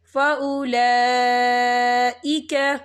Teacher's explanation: وَمَن يُطِعِ اللَّهَ وَالرَّسُولَ فَأُولَئِكَ، یا دیکھیں فَأُولَا، لام کے پر کڑی حرکات ہے اور اس پر مد بھی ہے، یہ مد جو ہے مد متصل ہے، اس کی مقدار 4 حرکت کے برابر ہے، تو ہم اسے 4 حرکت کے برابر کھینچ کے پڑھیں گے